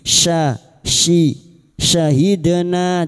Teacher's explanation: huruf syin wastul lisan atau tengah lidah · syahidna dal sukun yang mati asli di tengah kalimat qalqalah sugro, jangan lupa dipantulkan